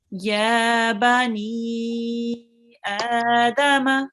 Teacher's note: Make sure the noon is for longer than 2 seconds. So it's longer than the ya and the alif, the a here.